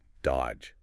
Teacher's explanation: You don't say that middle D at all. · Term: Completely silent